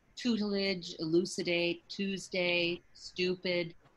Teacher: the liquid u that's an important sound um instead of the pure u sound as in um tutelage elucidate tuesday stupid that's how we can